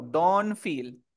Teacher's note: si la t está entre dos sonidos de consonante borro la t